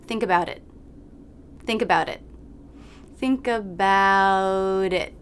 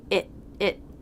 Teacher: think about it i'll think about it do you notice that i don't release the t in it it it i just cut off the airflow in my throat to make that stop